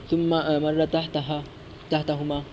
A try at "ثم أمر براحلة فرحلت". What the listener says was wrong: لفظ چھوڑ گئے آپ، نہیں پیچھے پڑے، عبارت ہی چھوڑ دی آپ نے۔